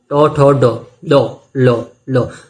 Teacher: आपको अपनी जीभ ऊपर मूर्धा पे ले जानी है।